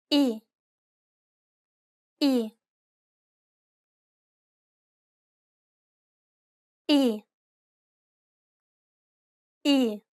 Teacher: it's identical to the I in sit. Be sure to pronounce it nice and short.